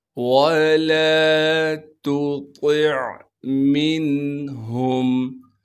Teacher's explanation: تا کو باریک کریں گے اور طا کو موٹا کر کے پڑھیں گے اور طا کو آگے عین ساکن سے ملائیں گے۔